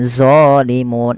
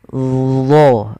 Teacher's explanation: dia mirip dengan zal, tapi pangkal lidahnya terangkat. Dan dia punya sifat namanya idbaq, melekat ke langit-langit lidah kita.